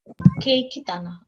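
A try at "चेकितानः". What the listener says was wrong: This C is pronounced as cha. Cheki.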